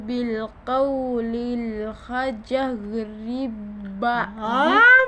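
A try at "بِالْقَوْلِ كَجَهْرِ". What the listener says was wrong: Bil kaulil. Yan ay kaf. Ayusin mo. Ginawa mong lam ang kaf. Ayusin mo. Bil kauli kajah.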